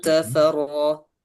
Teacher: Ro, dia adalah ro tafkhim karena dia adalah fathah. Tebal, tebal berarti ya.